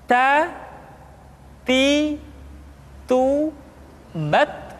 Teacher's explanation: Keluar dengan menyentuhkan ujung lidah kita dengan gusi-gusi gigi seri bagian atas. Ta. Kemudian huruf Ta ketika diucapkan terdengar ada nafas yang mengalir, atau dalam ilmu tajwid disebut dengan sifat al-hamas.